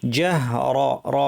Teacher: জাহ পাতলা র ভারী